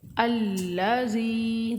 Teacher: الذی، لام مشدد ہے، تھوڑا رک کر اس کے ساتھ پڑھیں گے۔ الذی، زال کو نرمی سے پڑھیں گے اور زال حروف مدہ ہے، کھینچیں گے اس کو ایک الف کے برابر۔ ایک الف کی مقدار ایک انگلی کو بند کرنے یا کھولنے میں جتنا ٹائم لگتا ہے، ٹھیک ہے۔